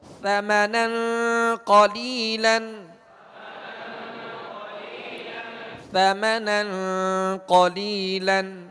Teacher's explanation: سرا زبان اوپر کے سامنے والے 2 دانتوں کے اندرونی کنارے سے آپ لگائیں گے تو نرمی کے ساتھ ادا ہوں گے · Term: ثا